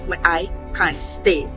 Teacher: In the original accent which is influenced by South African English, it is pronounced as but I can't stay. In terms of stress, both version place emphasis on can't and stay. But the original accent makes can't sound stronger and more expressive. · In terms of stress, both versions place emphasis on can't and stay, but the original accent makes can't sound stronger and more expressive. For intonation, BBC English uses a slight rise on can't and then falls on stay, showing finality.